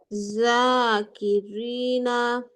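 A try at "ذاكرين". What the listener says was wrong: দেখো বাংলায় আমি কি লিখছি এখানে? দয়াকারে দা, তাই না? তো তোমার উচ্চারণটা দা আসতে হবে, তোমার উচ্চারণটা অন্ত্যের জ চলে আসতেছে।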